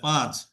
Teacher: যেমন বাংলায় পাঁচ লিখতে দেখেন চন্দ্রবিন্দু আছে, তো আমরা বাংলা যখন বলি চন্দ্রবিন্দুর হক আদায় করার জন্য কিন্তু নাকে লাগাইতে হয়